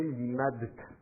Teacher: En plus là c'est un dalet et un tav, c'est pas ce qu'il y a plus facile à prononcer d'enchaîner deux dentales. Le de et le te sont deux dentales, la langue est contre les dents, donc en plus c'est pas facile d'enchaîner les deux dentales.